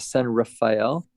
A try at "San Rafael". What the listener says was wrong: San Rafael. It's as if There was, as if no A. Drop the A.